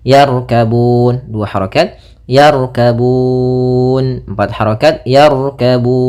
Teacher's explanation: pada lafal Bun di situ ada bacaan Mad Alif di sukun kita boleh memanjangkannya dua harakat empat harakat ataupun enam harakat